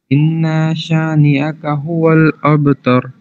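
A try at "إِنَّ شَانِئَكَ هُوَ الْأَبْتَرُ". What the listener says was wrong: انا کو اتنا لمبا نہیں کرنا، جو لاسٹ والی آیت میں انا ہے نا اس کو اتنا لمبا نہیں کرنا. ان شانئک هو الابتر.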